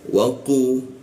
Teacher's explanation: posisinya di siku tenggorokan, lidahnya dinaikkan sehingga rongga udara terkunci ketika membacanya.